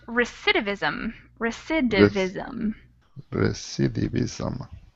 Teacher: it's recidivism with an accent on the second syllable